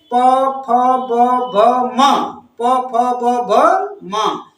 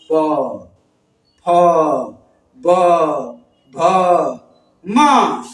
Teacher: ओष्ठ ध्वनियां बोल कर देखिए, प फ ब भ म। ये दोनों ओठ चिपक रहा है, दोनों ओठ चिपक रहा है, तब आप ध्वनियां बोल पाएंगे।